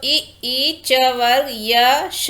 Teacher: तालव्य वर्ण क्या है, तालु ये है हमारा जो ई, च वर्ग, य, श, ये सब जो है तालु से बोले जाते हैं